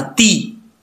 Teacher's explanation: अब ता के नीचे जेर है तो इसको ते नहीं पढ़ना, ती